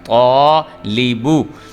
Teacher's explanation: جو طا کے ساتھ الف جڑا ہوا ہے یہ پر کر کے پڑھا جا رہا ہے